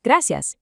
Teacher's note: Try giving just a tiny slight roll to the R in gracias